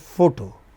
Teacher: photo, only two syllables, initial syllable is stressed,